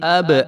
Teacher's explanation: با بھی جو ہے حروف قلقلہ میں سے ہے تو اس کو جو ہے وہ قلقلہ کر کے پڑھیں گے کیونکہ اس کے اوپر جزم آ گئی ہے، ابناءکم، تو یہ